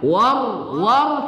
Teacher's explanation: War kita baca tafkhim, ra diapit oleh dua huruf yang berbaris di atas